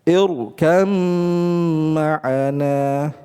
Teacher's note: dua huruf ini ittahada fil makhraj sama makhrajnya ya, maka dibacalah dengan idgham kamil. · dimasukkan dengan idgham kamil ma'a baqa'il gunnah, ya, dengan disertai adanya gunnah